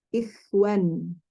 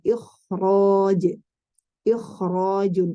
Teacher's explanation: Pada kata ikhrajun, itu kha-nya tafkhim mutlak ya. Tetap dibaca tafkhim. Kenapa? Karena setelah kha ada huruf ra yang juga ditebalkan.